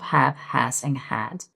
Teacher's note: the H sound, the voiceless glottal fricative might be a challenge.